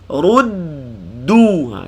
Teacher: Ru muncung bila berpindah kepada huruf dal sukun.